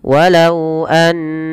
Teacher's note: jangan langsung dilepas suara nunnya tapi perlu ditahan dahulu · kita memasukkan suara bunyi huruf itu kepada rongga hidung kita dan dia menahan suara n ya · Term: gunah